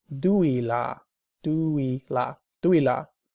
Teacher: I thought it was a diphthong, 对了, for correct, but it's actually almost like she separates the vowels